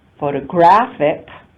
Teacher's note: All the other vowels are unstressed vowels, photography, and photographic, again, the only stressed vowel occurs in that next to the last syllable